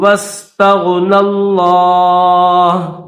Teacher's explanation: لفظ اللہ کو موٹا کریں گے اور یہاں پر اسٹاپ بھی کریں گے، یہ چھوٹا سا طا اسٹاپ کرنے کی نشانی ہے کہ یہاں پر آپ اسٹاپ کرنا چاہیں تو وقف کرنا چاہیں تو کر سکتے ہیں۔